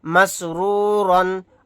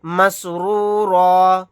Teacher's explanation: آیت کرنے کی صورت میں را الف کے ساتھ ایک زبر کو پڑھیں گے، دو زبر نہیں پڑھے جائیں گے